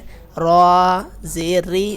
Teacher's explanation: را بریک پڑھا جائے گا نیچے زیر آنے کی وجہ سے